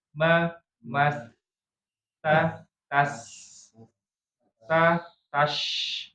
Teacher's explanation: 3 huruf ini punya sifat namanya rokhwa. Rokhwa itu suaranya mengalir.